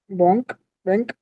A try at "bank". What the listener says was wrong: Oui, bon, très bien.